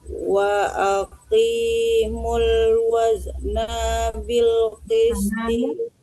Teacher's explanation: wa aqi jangan wa aki, wa aqi qaf tebal.